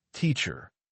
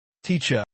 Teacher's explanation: Another example is the R sound. In American English, the R is strong and clear, teacher. But in British English, it is often softer or even silent.